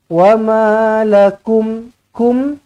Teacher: mim yang bertanda sukun bertanda mati, izhar syafawi, matikan dengan jelas, matikan dengan terang